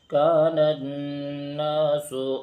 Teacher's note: کان الناس میں نون پر غنہ بھی ہوگا، کیونکہ نون اور میم پہ تشدید ہو تو ایک الف کے بقدر غنہ ہوتا ہے